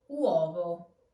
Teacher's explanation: The weak U turns into a W sound. So not uovo, but uovo.